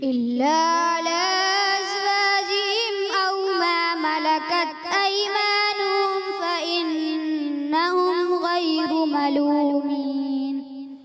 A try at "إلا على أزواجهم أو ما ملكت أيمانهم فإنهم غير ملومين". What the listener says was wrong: علا کی مد کو تھوڑا سا اور کھینچنا ہے، ٹھیک ہے، سانس کھینچ کر انشاءاللہ پہنچ جائیں گے. إلا على أزواجهم أو ما ملكت أيمانهم ملومين